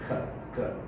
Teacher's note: you can also have a plosive sound, which is velar